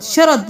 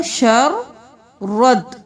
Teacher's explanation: ان، اب یہاں پہ شین زبر را، شر را زبر، اب یہاں پہ الف کو بھی نہیں ملانا، لام کو بھی نہیں ملانا، را کے ساتھ دال کو ملانا ہے، کیونکہ دال پہ تشدید ہے اور حرکت ہے۔ شین زبر را شر، را زبر دال رد، شر رد، شرد نہیں کرنا، شر رد۔